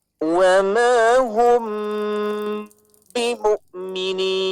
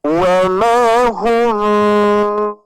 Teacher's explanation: Jadi ketika kita menutup hidung kita, maka kalau misalkan bibir kita rapat, hidung kita ditutup, itu pasti tidak akan ada suara yang keluar. Sedangkan hukum ikhfa syafawi di sini tidak dirapatkan dengan sempurna, ya, melainkan ada udara yang keluar, ketika ditutup hidung pun juga masih ada bunyi, ya, meskipun hanya sedikit.